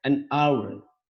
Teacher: H-nya dihilangkan atau tidak bersuara H, tapi malah yang terdengar adalah A, maka pakai N.